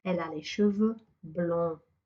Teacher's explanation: I don't hear the D and I don't hear the S.